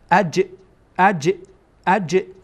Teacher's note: یعنی جیم در اینجا ما یک تکان میدیم، حرکت میدیم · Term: قلقله